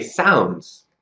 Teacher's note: the z sound replaces the S sound